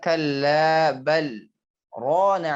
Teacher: Huruf lam sukun dibaca jelas karena dia ada saktahnya.